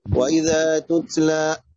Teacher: التاء الاولى لا تهمس والتاء الثانية تهمس لان الاولى متحركة والثانية ساكنة. وكذا في كل تاء متحركة لا يجري النفس فيها.